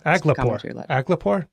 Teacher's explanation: The emphasis is on the first syllable.